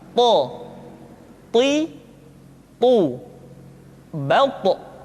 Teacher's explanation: To diucapkan dengan menyentuhkan ujung lidah dengan gusi-gusi dua gigi seri bagian atas. Sifat yang dimiliki oleh huruf to yang mesti nampak ketika kita ucapkan adalah sifat al-isti'la dan sifat al-itbaq.